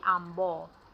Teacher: dibuang diftong huruf AI, AU dan OI pada akhir suku kata